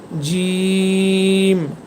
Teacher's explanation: জিম আপনার ঠোটের মাঝখান আপনার জিহবা সরি সরি ঠোট না জিহবা আপনার জিহবার মাঝখান উপরের তালুর সাথে একসাথে লাগিয়ে রেখে জিম হরফটি উচ্চারণ করবেন।